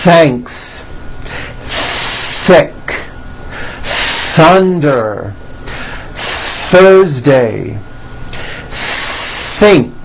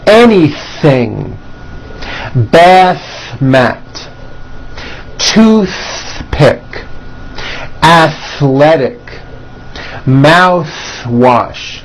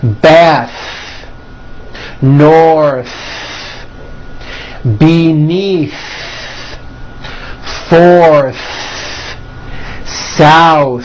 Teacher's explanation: stretch out the TH sound and hear the air friction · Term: TH sounds